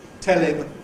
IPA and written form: ˈtel ɪm (tell him)